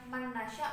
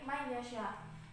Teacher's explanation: karena huruf nun yang melebur pada huruf ya itu sifat gunahnya itu masih tampak, jadi tidak secara keseluruhan